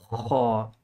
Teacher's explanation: this is like a scratching sound. You're scratching the back of your throat to say ha. There's a difference between a gargling sound. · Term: Kha